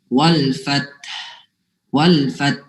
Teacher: Artinya gini, kita nyebut huruf fa, kemudian tak mati. Napas dari tak yang mati itu kita gunakan untuk menyebut huruf ha.